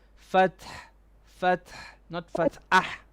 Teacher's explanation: Okay, don't say fat'ah. Now you're saying fat'ah. You're adding a hamza.